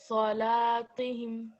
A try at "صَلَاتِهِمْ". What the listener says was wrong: لا heavy is not, لا is not heavy.